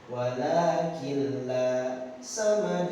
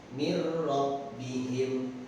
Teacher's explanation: Halaman berikutnya ini ada pokok bahasan yang membahas tentang nir sukun atau tanwin bertemu huruf lam atau ro. Ini termasuk ke dalam hukum idgham bila gunah ya. Dimasukkan dengan tanpa gunah ya. Pokok pembahasannya nun sukun atau tanwin an in un bertemu lam bertemu ro.